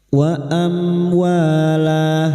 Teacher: fathah bertemu alif dua harakat mad thbi'i · Zinatau wa amwala, wa mim sukun bertemu wawu idhar syafawi, mim sukun dibaca jelas tanpa mendengung